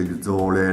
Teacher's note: in certi luoghi in Toscana per esempio si pronuncia la s in modo che assume il suono della Z